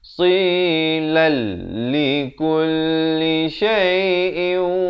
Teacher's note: Silal di sini idgham bila gunnah, asalnya tafsilan, tapi bila datang lam masuk terus tanpa dengung